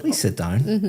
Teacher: my intonation is going up. It sounds completely different, but the words are Yes.